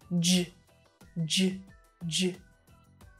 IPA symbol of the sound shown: dʒ